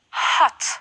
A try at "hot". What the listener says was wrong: Don't forget to pronounce the H, hot.